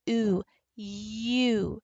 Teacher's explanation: U. So if you think about this long U, it really is like an Y and an oo, and squishing them together so tightly